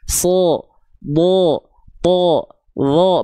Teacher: So, bo, to, lo baru tebal. Karena dia ketika fathah terdengar seperti bunyi vokal O.